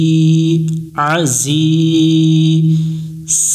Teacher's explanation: আইন জবর আ, এটা একটু গলা চেপে উচ্চারণ করতে হবে। জায়াজের জি, আজি।